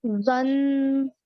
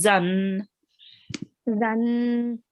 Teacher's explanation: try not to round your mouth with the za, okay? So it's just zan.